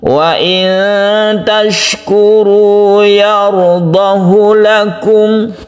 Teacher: 'ha' ini tidak dibaca panjang, melainkan pendek. Ini merupakan pengecualian terhadap aturan Mad Silah Qasirah. · 'ha damir' dalam kalimat ini dibaca pendek, khususnya untuk kalimat ini.